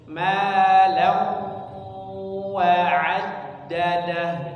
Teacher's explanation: Ma law wa'addadah seperti itu. Jadi ada sedikit suara sengaunya ketika kata lawa'ad ya.